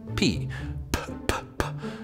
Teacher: You make consonants by bringing together two parts of your mouth or throat, like P, P, P, P. You bring your lips together and block the air for a second